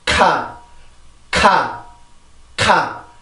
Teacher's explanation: 공기가 바로 나오는 게 아니라 혀 때문에 공기가 한번 막혀서 공기를 모아요. 모으고 나서 이렇게 출발을 하기 때문에 우리나라 말보다 소리의 출발 시간이 늦죠.